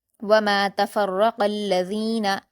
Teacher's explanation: और रा पर भी हरकत है और तशदीद है तो फा को रा से मिलाएंगे और रा को पुर पढ़ेंगे तफर्रा काफ पर हरकत है जल्द पढ़ेंगे और आगे अलजीना में लाम पर तशदीद है इसलिए काफ को लाम से मिलाएंगे